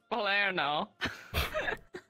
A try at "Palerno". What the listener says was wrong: You kind of slurred fun. The syllables together, but we get what you mean. It's Palerno, but you said Blurno, so.